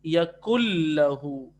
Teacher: نون ساکن کی موجودگی میں آپ ملا رہے ہیں, تو یہ ہے ادغام بلا غنہ